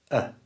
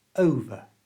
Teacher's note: to say this naturally, we don't pronounce the R at the end of over. The ER is just pronounced with that little schwa sound that's so common in English